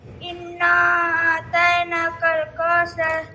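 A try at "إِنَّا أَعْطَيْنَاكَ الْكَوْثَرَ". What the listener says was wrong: آتینا نہیں، یہ دو نقطے والا تا نہیں ہے، اس کو آتینا نہیں کہیں گے.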